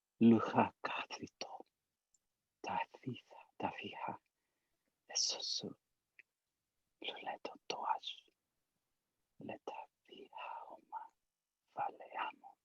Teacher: So if I were really good at speaking the language, everything would have been voiceless, including the vowels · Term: totally whispered